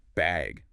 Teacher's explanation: bag with a rising tone